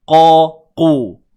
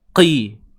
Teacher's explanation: Huruf qaf baris bawah tebal. Cuma ianya tidaklah setebal seperti baris atas ataupun hadapan.